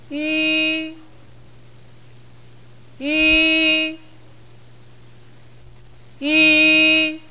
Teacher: 선생님 발음을 보시면 발음이 끝날 때까지 입술의 모양이 변하지 않습니다. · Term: 위 발음